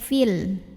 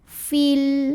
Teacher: Jika tidak berhenti atau wasol, mad tabi'i ini gugur. Fi-nya dibaca pendek, fil. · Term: takhallus bil hadfi